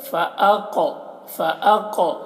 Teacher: क़ाफ में कलकला करेंगे और क़ाफ को मोटा करके पढ़ेंगे।